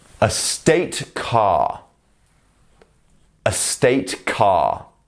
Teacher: when we say car in British English we don't say the r like in American English we pronounce the a as H it's it's quite a